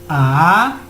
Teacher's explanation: el tono 2 dice que es como una forma ascendente como si subiera un tono de voz